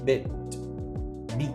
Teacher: a letra T final, a consoante final, ela tem que parar no som da consoante, no T